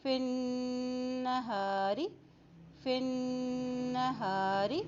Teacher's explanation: نون کے پر جب شد آتی ہے تو وہاں پر غنہ ادا کیا جاتا ہے